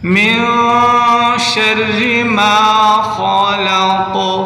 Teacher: خا کو موٹا کریں، قاف پر قلقلہ